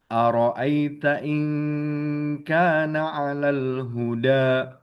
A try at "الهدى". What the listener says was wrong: Huda lebih di apa ya? Lebih dicadelin sedikit ya karena da tadi yang baca ujung lidahnya agak ke belakang. Huda enggak huda. Huda.